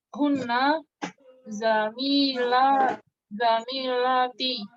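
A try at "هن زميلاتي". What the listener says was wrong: Nah, panjang semua Bu ya. Zamilati gitu.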